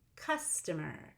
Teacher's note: And for customer, notice that I go up, down, down.